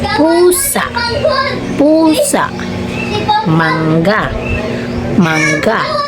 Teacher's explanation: Ang mga tunog na ito ay nabubuo sa pagsasara o pagdikit ng ating mga labi. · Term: panlabi